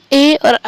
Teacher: इनको बोलने के लिए आपको कंठ, तालु और जीभ का प्रयोग करना पड़ेगा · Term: कंठ तालव्य